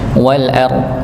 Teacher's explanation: Rnya ditebalkan, donnya juga di ditebalkan. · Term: huruf dha